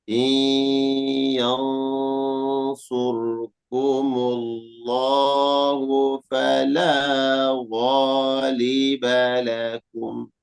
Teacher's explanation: Yang yang ikhfa hakiki dan huruf sad huruf isti'la, huruf tebal. Maka ikhfanya terdengar tebal.